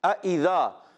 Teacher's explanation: اذا، دونوں حمزہ خوب تحقیق سے خوب ظاہر ہوں گے، اور ذال کے دائی کلیئر، ذال کو ذا سے نہیں بدلیں گے، ذال الف زبر ذا ہے، ایک الف کھینچنا ہے